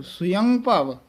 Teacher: ਯ ਪੂਰਾ ਬੋਲਣਾ ਇਥੇ ਸੁਅੰ ਭਵ ਨਹੀਂ ਬੋਲਣਾ